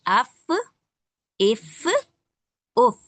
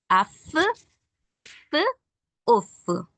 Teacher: अंदरूनी हिस्सा जो होठों का है वहां पे लगेगा तब हमारा फदा होगा।